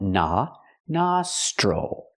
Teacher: The O makes the open a sound like hot and stop.